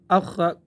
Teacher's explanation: اخ اخ اخ، اس کو ہم مشدد بنائیں تو اخ اخ اخ اخ اخ اخ، اس طرح نہیں کرنا، قلقلہ نہیں کرنا ہے، اخ اپنی طرف سے کوشش آواز روکنے کی کرنی ہے